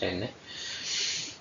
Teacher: La punta de la lengua se acerca a los dientes superiores para pronunciarla.